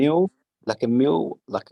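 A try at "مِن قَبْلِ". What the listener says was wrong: No, not mew. Min qabli. Don't say mew. Don't say mew. We say min, but instead of saying the noon sakin, we take the sound to our nose. Min qabli, like that.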